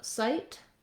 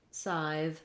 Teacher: feel the ending sound of sight, that we end and stop that sound, versus scythe can continue and be held